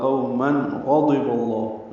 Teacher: تنوین کے بعد غین آنے کی وجہ سے اظہار ہوگا